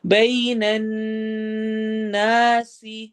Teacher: بئی یا لین ہو رہی ہے، نا میں الف مدہ ہے